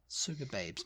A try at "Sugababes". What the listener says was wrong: sugar babes in it mate with no r no R yeah it's all one word too